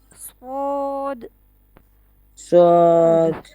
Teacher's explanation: The whistling sound will be there but is weak. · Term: whistling letters